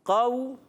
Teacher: واو لین کو نہیں کھینچتے